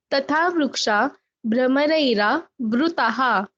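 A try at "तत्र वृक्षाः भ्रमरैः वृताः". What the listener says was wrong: You should not pause, but anyway, good try. If you press this vru, na, it is easier to pronounce. Brahmarair avrutaha. Brahmaraihi avrutaha. Vrikshaha visargalopa.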